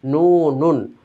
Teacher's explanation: ওটাকে যখন আমরা বলি নুন, তো পেশের কারণে আসলে ঠোঁটটা গোল হয়। তো নুন হরফটার জন্য না, বরং নুন হরফটাকে ভেঙ্গে লেখার জন্য বা পড়ার জন্য যেই শব্দটা আমরা ব্যবহার করি মুখ দিয়ে, সেটাকে পেশের জন্য গোল করতে হয়।